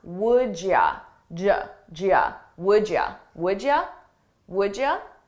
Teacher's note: The same thing is happening here with would you. You becomes ya, and I combine those sounds